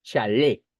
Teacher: Si se dan cuenta, la mayor fuerza de voz se encuentra en le. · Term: aguda